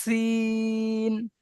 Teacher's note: সিন একটু সিটি মতো আওয়াজ হবে, সিন।